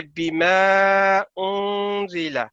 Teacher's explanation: یہ الف کے اوپر جو مدہ ہے اس کو آپ نے 3 سے 5 سیکنڈ تک لمبا کر کے پڑھنا ہے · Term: مد صغیر